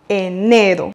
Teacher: n'oubliez pas d'accentuer sur le deuxième E, enero. Et voici un exemple pour le pratiquer, le prononcer et le mémoriser.